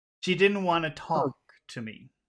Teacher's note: as long as you have the N you don't need the T